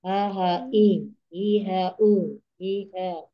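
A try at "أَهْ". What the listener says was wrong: Itu rokhwanya harus tetap ada sampai akhir. Nah, Ya, kalau seandainya biasanya ha, ha, i, ha, itu hamesnya udah hilang. Rokhawa hilang, hamesnya hilang kayak gitu.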